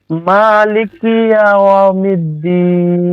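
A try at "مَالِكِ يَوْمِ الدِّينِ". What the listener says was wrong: লিকি টানবে না, মালিকি মালিকি ইয়াউমিদ্দিন।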